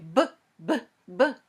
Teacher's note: feel anything vibrating okay and if you say but but but you can feel that your vocal cords are vibrating there shaking a little bit